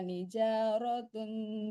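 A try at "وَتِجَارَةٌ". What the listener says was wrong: Itu ulang lagi tadi kedengarannya wanija. Itu watija.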